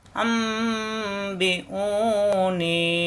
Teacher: এই নুন সাকিন তানমিনের বাম পাশে বা আসলেই তখন পরিবর্তন করে মিম ধরে গুণা করতে হবে